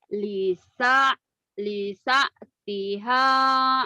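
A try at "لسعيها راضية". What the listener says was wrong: lisa'iha, bukan lisatiha. Lisa'iha. Lisa'iha radiyatun.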